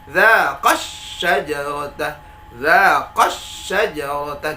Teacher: kita baca qa-nya dengan menabarkannya, mengaksentuasikannya atau menaikkan intonasi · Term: an-nabar